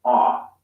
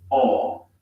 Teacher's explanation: the american o sound is an unrounded vowel ah while the british o sound is rounded